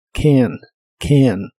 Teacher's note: siempre se pronuncia como si fuese una mezcla del sonido e y el sonido a